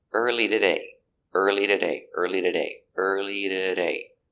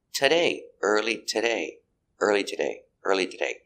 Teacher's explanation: the t is between vowels so you can change to a d and say the day it's a fast D early today early